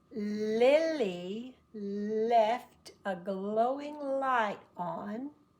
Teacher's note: The L uses just the front tip of the tongue and puts it right behind the teeth. So the teeth are here, the tongue is here.